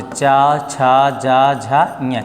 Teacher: च वर्ग किससे बोला जाता है? तालु से।